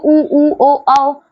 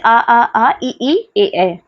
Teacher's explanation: जैसे कि उ बोलते हो तो होठ आगे की तरफ दोनों होके गोल हो जाते हैं ना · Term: वृत मुखी